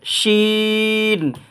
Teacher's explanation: এই শিন হরফটা উচ্চারণের স্থান মানে জায়গা হচ্ছে আপনার জিহ্বার মাঝখান, তালুর মাঝখান আপনার, অর্থাৎ এই জিম যে জায়গা থেকে উচ্চারণ হয়েছে সেই জায়গা থেকে শিন উচ্চারণ হবে, কিন্তু আওয়াজের মধ্যে পার্থক্য হবে। · এটার আওয়াজ চতুর্দিকে ছড়াবে, অর্থাৎ এই আপনার সাপ যখন রাগান্বিত হন শাসা আওয়াজ বের হয়, ওই শাসা আওয়াজে এই শিনটা উচ্চারণ করবেন।